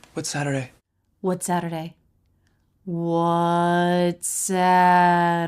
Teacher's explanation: one peak of stress it's on Sat everything else leads up to it smoothly